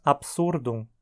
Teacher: dizemos absurdum como paroxítona porque a penúltima sílaba sur é pesada